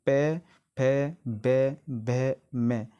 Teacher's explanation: जितने भी शब्द मैंने बोले हैं डियर फ्रेंड उसमें हमारे दोनों होठ जो है आपस में मिले हैं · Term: ओष्ठ व्यंजन